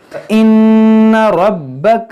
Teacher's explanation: نون مشدد ہے, اس میں غنہ کریں گے, را پر زبر ہے, اس کو موٹا پڑھیں گے. با حروف قلقلہ حروف مشدد ہے تو اس کو خوب جماؤ کے ساتھ پڑھیں گے.